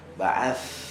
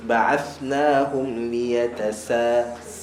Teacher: Sa hujung lidah pergi ke hujung gigi atas. Hujung lidah pergi ke hujung gigi atas. Ba'ath. Sin pula hujung lidah pergi ke hujung gigi bawah.